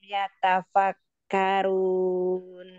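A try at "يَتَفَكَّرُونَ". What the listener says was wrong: Runnya kurang tebal. Ro, doma.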